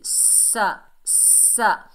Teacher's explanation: سین کو سختی اور سیٹی سے